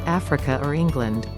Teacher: the invasive r is when there is no r present as in the case of africa or england